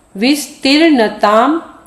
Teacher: युगम वित सर है विस्तर्णताम यानी यह थोड़ा सा कठिन लगेगा न के ऊपर जो र की रेप आई है उसको पहले बोल दो